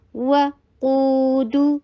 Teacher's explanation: دیکھیں قو 2 حرکہ لانگ، دو 1 حرکہ لانگ، تو اس میں لینتھ میں اچھا فرق نظر آتا ہے